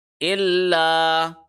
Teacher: لیکن جس لیٹر کوئی کسی اور لیٹر کے اوپر اگر تشدید آ جائے تو صرف آدھے سیکنڈ کے لیے اس کے اوپر ٹھہرتے ہیں۔ الا، یہاں پہ ال لام کے اوپر ہم آدھے سیکنڈ کے لیے ٹھہرے، پھر لا کو 1 سیکنڈ کے لیے لمبا کیا کیونکہ یہاں پہ الف مدہ کا قانون لاگو ہو رہا ہے۔